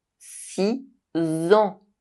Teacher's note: The [s] sound of number six is replaced by a [z] sound in the liaison.